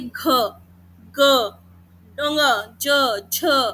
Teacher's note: सघोष होते हैं जिन ध्वनियों का उच्चारण करते हुए कंपन पैदा होती है। वाइब्रेशन होती है।